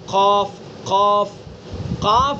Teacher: قاف کے اندر ایک طرح کی بلندی ہے، پر ہونا ہے